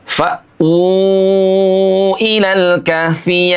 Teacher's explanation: Maka di sini berlaku hukum mad bertemu dengan hamzah. Berapa panjangnya? 4 harokat. Boleh juga 5 harokat.